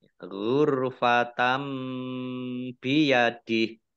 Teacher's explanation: Fathah tanwin bertemu dengan huruf ba bacaan iqlab atau membalik ya, baknya dibaca mim dulu. Nah, ditandai dengan ada mim kecil berdiri.